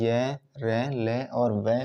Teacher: ये अल्पप्राण और सघोष होते हैं